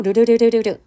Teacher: 혀 가장자리로 소리가 빠져나가는 흐름 소리에 해당이 됩니다 그렇기 때문에 이거 자체가 갖고 있는 굉장히 밝고 굴러가는 느낌이 있어요